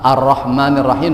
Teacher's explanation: Kalau Ar-Rahman itu namanya lam syamsi atau sering disebut lam syamsiyah ya. Huruf lamnya tidak terdengar karena nyambungnya dan huruf ro.